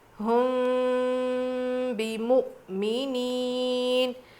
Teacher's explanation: میم ساکن کے بعد با آ جاتا ہے تو غنہ اور اخفاء کر کے پڑھیں گے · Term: اخفاء شفوی